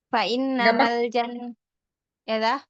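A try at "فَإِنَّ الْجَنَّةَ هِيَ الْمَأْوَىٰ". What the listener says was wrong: nggak pakai ma. Fa'innal,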